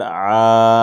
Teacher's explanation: وجدا کا عین الف زبر عا، اوپر مد، مد متصل ہے، حرف مدہ کے بعد حمزہ اسی کلمے میں ہے، اس کو بھی 5 الف کے برابر کھینچ کے پڑھیں گے